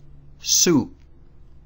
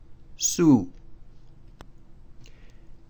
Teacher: it's a vowel that has a creaky sound